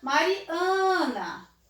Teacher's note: Esse an é a minha sílaba mais forte.